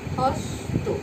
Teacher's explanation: শব্দের শেষের যুক্ত ব্যঞ্জনের অ সর্বদাই উরূপে উচ্চারিত হয়। যেমন একটা উদাহরণ, হস্ত, এটা হয়ে যাবে হস্ত, উরূপে উচ্চারিত হয়েছে।